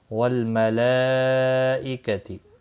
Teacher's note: مد متصل ہے، چار الف کے برابر کھینچ کر پڑھیں گے۔